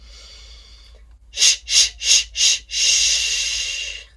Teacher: our sh sound, which is an unvoiced fricative.